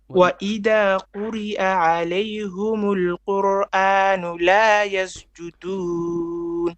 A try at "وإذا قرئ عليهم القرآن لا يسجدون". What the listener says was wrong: Okay, وإذا, so that needs to be more clear. Okay, قرئ عليهم, not humu.